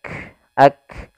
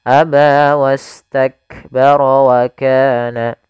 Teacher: syiddahnya dulu, tertahannya suara baru nafas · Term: huruf kaf